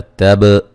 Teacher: تب تا کو باریک با پہ قلقلہ